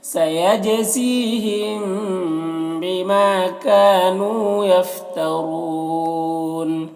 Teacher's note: یفترون میں را کو پر پڑھیں گے، اور یہاں پر بھی وقف کی صورت میں نون کا زبر سکون سے بدل جائے گا تو مد عارض وقفی ہوگا ، اور اس میں طول توسط قصر تینوں جائز ہوتا ہے،